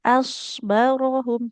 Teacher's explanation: Untuk huruf shotnya sudah sangat tebal. Bagus sekali. Tapi hamzahnya nggak boleh ikut-ikutan tebal.